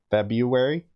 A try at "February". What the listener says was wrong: See, that's where you're wrong. It's actually February. There's an R.